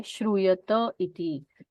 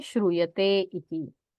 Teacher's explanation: और श्रूयते इति, यहाँ पर भी एकार है, उसकी एचो यवा अयादि संधि होनी चाहिए थी, वो होकर फिर वहां से लोप होकर श्रूयत इति, ऐसा अय का यकार निकल जाता है और सिर्फ अ सुनाई देता है